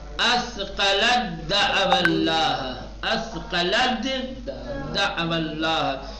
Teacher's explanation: جیسے اثقلت دعو اللہ، تا آ گیا، اس کے بعد دال آ گیا، تا ساکن ہے اور دال پر زبر ہے تو تا کو حذف کر دیں گے اور دال کو تشدید دیں گے